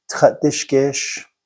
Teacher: Actually, if you say Dibé Tádíshgéésh, it's grammatically incorrect. And if you notice, there's a glottal stop in there.